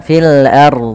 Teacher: Jangan sampai kita membaca dengan fil ARD rnya tipis padahal rnya tebal karena Kenapa dibaca tebal karena R sebelumnya adalah huruf fathah ro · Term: ro tebal